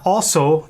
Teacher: On the one hand, the word also, ear, in the accusative, contains a long aw in its first syllable, arising from an original Proto-Germanic diphthong au